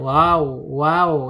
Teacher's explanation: Walaupun dia pergerakannya dari belakang. Wau asyafatain dua bibir tapi dia terbuka.